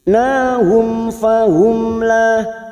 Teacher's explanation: Nahum mim sukun bertemu fa idhar safawi dibaca jelas, nahum fahum mim sukun lagi bertemu lam idhar safawi, idhar safawi masing-masing mim sukun dibaca jelas tanpa mendengung